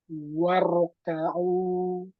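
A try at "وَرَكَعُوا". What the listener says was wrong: Tebalkan lagi. Waro. Waro. Ka'u. Waro. Ka'u. Masih kurang. Waro. Pangkal lidahnya kurang naik. Waro. Waro. Ka'u. Waro. Ka'u.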